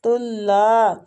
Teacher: تا کو لام کے ساتھ ملاتے ہوئے لام کو کھینچیں گے، الف مد ہو رہی ہے